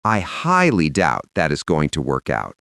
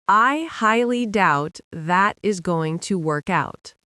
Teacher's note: to make it land, you want to put a little more weight on highly. Not shout it, just lean into it slightly.